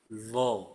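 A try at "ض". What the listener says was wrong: Nah, ini masih main nih. Kalau masih ada nya itu masih masih kontraksi di sini. Masih nempel. Nah, itu jangan pindah. Lidahnya jangan pindah. Terus tinggal dirasakan aja. Mana yang nanti ditekan. Nah, jadi yang ditekan nanti di sini. Terus dibunyikan. Do gitu ya.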